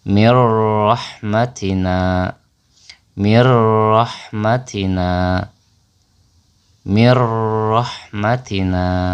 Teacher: Jadi nun sukunnya dilebur ke huruf ro dan ro-nya menjadi bertasdid atau ro-nya double.